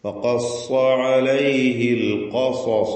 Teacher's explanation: മദ് അസ്സില അസ്സുഗ്റ മദ് അസ്സിലത്തി സുഗ്റ فلما جاءه وقص قاف صاد تفخيم وقص عليه القصص ഇവിടെയും ആവർത്തിക്കുകയാണ്. ഖാഫ് 2 സ്വാദുകൾ തഫ്ഖീം ചെയ്യുക, സ്വരഭാരത്തോടെ തടിപ്പിച്ച് ഹെവിയാക്കി പറയാം.